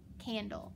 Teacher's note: I've got an A in front of an N. The A has to be short